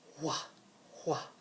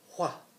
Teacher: in other places of our world, like Canada, they still pronounce the WH with a breathier sound like wha, wha.